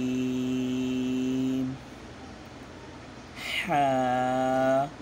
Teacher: হ্যাটা আপনার গলার মাঝখান থেকে চাপ দিয়ে পড়তে হবে